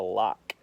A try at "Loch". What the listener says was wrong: No, Loch. You did the CH right, but for this word, it's going to be with the K sound.